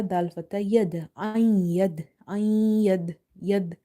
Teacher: Dal is from the qalqala letters, the letters in which you see that sound is reflecting back or the letters are bouncing. But here we have weak qalqala because the letter of qalqala is in between the word.